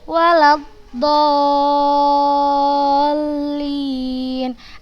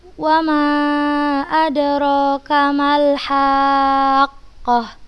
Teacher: kita tinggikan di huruf lam bertasydidnya, bukan di matnya